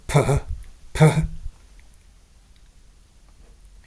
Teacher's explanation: Plosive p, as in P, and then the plosive with a H sound after it